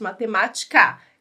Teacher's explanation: anti penúltima sílaba mais forte então a gente conta da última de trás frente matemática última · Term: proparoxítonas